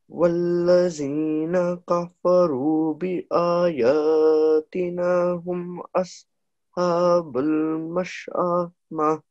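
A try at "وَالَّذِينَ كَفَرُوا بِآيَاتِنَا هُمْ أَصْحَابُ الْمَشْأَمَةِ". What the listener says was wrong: Okay, I think you can say this one again because although you made this long, bi-ayati, again, this wasn't thick, so that's al-sha, and then al-mash'amah.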